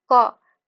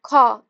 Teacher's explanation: ठीक है, तो उसमें ज्यादा फ्रिक्शन हो रहा है और ज्यादा आपका मतलब उसमें आपको देखिएगा घर्षण महसूस होगा, हवा ज्यादा बोलने में निकले, ख ख में आपका वायु ज्यादा निकल रहा है, तो ये आपका क्या हो जाएगा, महाप्राण में आ जाएगा।